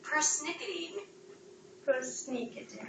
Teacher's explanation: So persnickety means придирчивый, hasty, picky person, yes? It's a 4-syllable word with stress on the second syllable.